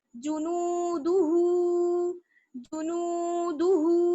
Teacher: जितना नून वाव पेश नू को खींचेंगे उतना ही हा उल्टा पेश हु को खींचेंगे।